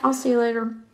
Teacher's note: The L pronunciation in I'll is a dark L pronunciation. This means that more of the body of the tongue is higher towards the roof of the mouth or the palate. Typically, the tongue tip, along with the front 1/3 of the tongue, is making contact with the palate, and it results in a more throaty quality, darker L.